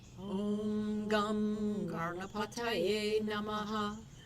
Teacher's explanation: And it might sound like I'm saying Garna with an R, but I'm really doing the N at the top of the mouth. There are 4 different N's in Sanskrit, so I'm doing the one at the top of the mouth. It sounds to the American ear, the Western ear, like an R sound almost.